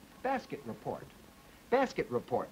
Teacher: The plus juncture comes between the T and the R.